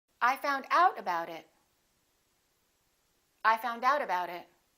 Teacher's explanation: if it's a phrasal verb, we stress the second part. We stress the preposition.